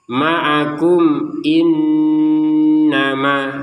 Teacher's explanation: antara kum dan itu jelas, gak ada dengungnya, gak ada samarnya